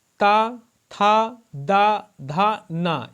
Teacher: त था द धा न यह सभी दंत वर्ग के अंतर्गत आते हैं